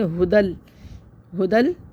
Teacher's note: ہاں کو جلدی پڑھنا ہے، دال کو بھی جلدی پڑھنا ہے، فوراً ملانا، رکنا نہیں ہے. ہدل اس طرح جیسے بہت سے لوگ کر لیتے ہیں، اس طرح نہیں کرنا ہے، جلدی ملانا ہے. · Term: تشدید سے ملا